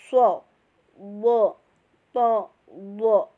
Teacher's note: Tebal, memenuhi langit-langit ya, lidah dan suara kita memenuhi langit-langit. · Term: Idbaq